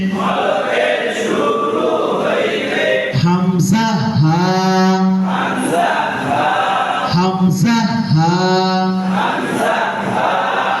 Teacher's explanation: 1 number মাখরাজ হলকের শুরু হইতে